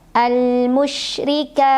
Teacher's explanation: ra dibunyikan secara tarqiq ri karena barisnya di bawah, tipis, pangkal lidah datar.